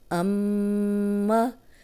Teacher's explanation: میم پہ شد ہے تو میں نے اس کو لمبا کیا ہے اور ناک میں آواز لے کے گئی ہوں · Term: غنہ